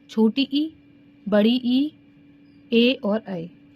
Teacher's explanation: जीभ के अगले हिस्से से उच्चरित स्वर। जो हमारी जीभ होती है उसके अगले हिस्से से जो बोले जाते हैं उन्हें बोलते हैं अग्र स्वर